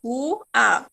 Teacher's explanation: Quando eu falo água, eu escuto o som do U também.